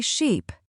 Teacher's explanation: That longer vowel in sheep changes the meaning completely.